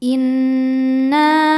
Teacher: Maka nunnya panjang, boleh 4 boleh 5 harokat. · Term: mad jaiz munfasil